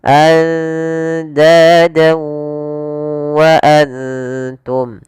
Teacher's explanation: Maka cara membacanya masukkan fathatainnya ke huruf waw dan ditahan. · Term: idgham bi gunnah